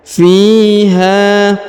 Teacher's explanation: huruf Fi diayun sekali karena di depannya terdapat Ya Sukun